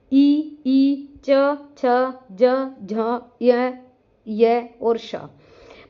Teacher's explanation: तालव्य वर्ण जिसका हमारा उच्चारण स्थान तालु होता है।